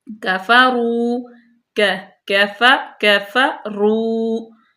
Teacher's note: فا جو ہے وہ دانتوں کے اوپر والے دانتوں کا کنارہ اور ہونٹوں کے تر حصے سے